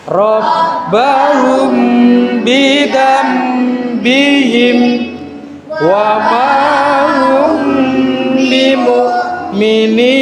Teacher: Terus yang kedua hukum bacaan ifa syafawi yaitu apabila mim mati bertemu dengan huruf ba. Cara membacanya disamarkan di bibir, dimasukkan ke huruf yang kedua yaitu huruf ba.